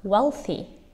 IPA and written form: ˈwelθi (wealthy)